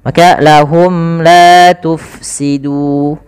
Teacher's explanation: cara membaca daripada ikhfa syafawi ini adalah suara mimnya harus jelas dan tidak boleh ditahan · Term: izhar syafawi